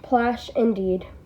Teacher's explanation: the short A in the middle, and that sibilant sh at the end